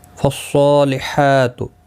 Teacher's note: صاد حروف مستعلیہ ہے، پر پڑھنا ہے، اس کے اوپر کھڑی زبر بھی ہے، ایک الف کی مقدار کے برابر کھینچ کر پڑھیں گے